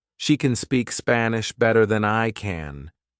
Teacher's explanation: It's so weak that it sounds like she can speak Spanish. The second can is strong.